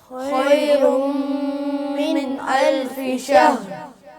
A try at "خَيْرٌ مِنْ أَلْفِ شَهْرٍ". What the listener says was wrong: تو الف شہر نہیں پڑھنا، اس کو الفی علیحدہ ہے اور شہر علیحدہ ہے۔ بعض لوگ جو ہیں وہ اس کو الف شہر کہہ دیتے ہیں، ٹھیک ہے؟